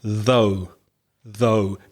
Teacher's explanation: you need to put your tongue between your teeth and make the sound, and there's vibration, so it's a voiced sound.